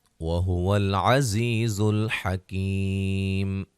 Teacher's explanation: زا کو سیٹی سے ادا کریں گے دونوں جگہ، اور یہ یا مدہ ہے، کی یا مدہ ہے، وقفاً بڑی مد کے ساتھ پڑھ سکتے ہیں۔